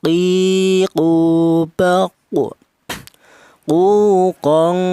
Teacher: huruf qaf ini keluarnya huruf berasal dari pangkal lidah, yaitu pangkal lidah itu lidah bagian belakang, itu ditempati 2 huruf, yaitu huruf qaf dan huruf kaf.